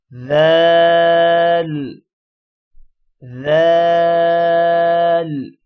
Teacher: اوپر والے دانت اور نیچے والے دانت درمیان میں زبان ہوگی تو سا ادا ہوگا، اور ذال بھی ایسے ہی ادا ہوگا۔